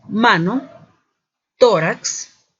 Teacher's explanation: ubicación del acento se encuentra en la penúltima sílaba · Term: palabras graves